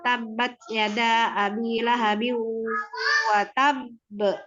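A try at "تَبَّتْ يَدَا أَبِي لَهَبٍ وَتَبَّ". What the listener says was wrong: Jangan terlalu lama. Jadi nggak terlalu lama juga.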